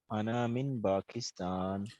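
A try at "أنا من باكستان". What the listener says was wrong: अच्छा ये जो अना है ना, इसको हम खींचते नहीं है, हालांकि ये नून अलिफ जबर ना लिखा हुआ है, लेकिन आप हैरान होंगे अरबी जबान में ये जो अना है ना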